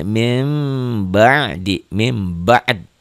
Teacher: tapi pengucapannya mah mirip-mirip ikhfa samar-samar juga mim gitu jangan Mim jangan mim yang sempurna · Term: iqlab